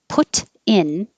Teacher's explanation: the t will change to a d so it'll sound like put in